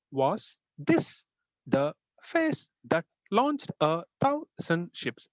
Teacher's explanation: you have five pairs of unstressed stressed syllables totally ten syllables